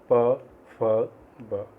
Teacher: ओष्ठ में आते हैं आपके प वर्ग